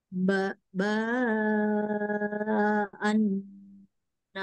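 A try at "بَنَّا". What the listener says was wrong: baan, jangan baan. Ban, ban, na, ana. Coba. Anak panjang A-nya.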